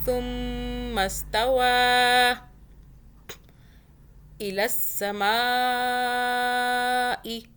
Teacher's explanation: سا کو سافٹ پڑھیں، زبان کو باہر کیجئے، پھر سا کو ادا کیجئے سافٹ۔ سین کی آواز میں، سیٹی کی آواز میں سا کو نہیں پڑھنا۔